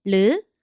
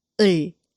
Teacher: At the beginning of a syllable, it sounds like a light, soft R, and at the bottom, it sounds closer to an English L.